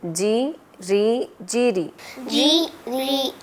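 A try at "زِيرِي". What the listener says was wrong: झटका नहीं देंगे, जी री नहीं बोलेंगे, जी री जीरी, जी भी नहीं करना, उसको खींचना भी नहीं है, जी री जीरी।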